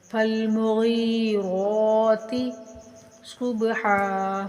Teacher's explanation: غین کو کھینچ کر ایک الف کے برابر اور موٹا کر کے پڑھیں گے، غین حروف مدہ ہے۔ را کو بھی کھینچیں گے لیکن تا کو بغیر کھینچے پڑھیں گے